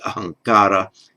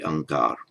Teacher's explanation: By the way, when you hear me say words in Hindi and I drop the final a off, that's correct, because in modern Hindi, the final a isn't pronounced. So in Sanskrit it would be ahankara, in modern Hindi, ahankar.